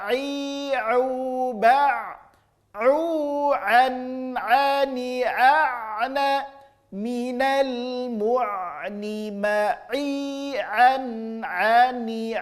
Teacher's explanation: huruf a murni keluar dari tengah-tengah tenggorokan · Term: huruf ain